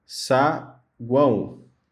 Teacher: aqui a gente consegue observar uma semivogal, uma vogal e uma semivogal, ok? Então, nesse caso, a palavra é classificada também como tritongo.